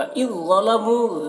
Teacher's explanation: ذال یہاں پر ادغام ہو رہا ہے تو ذا کو یہاں پر پر پڑھنا ہے، ذا کو، یہ ذال نہیں پڑھا جائے گا، یہ اس کے ساتھ میں مل جا رہا ہے۔